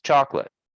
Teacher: it looks like it has 3 syllables, but actually the middle syllable here is like reduced to 0.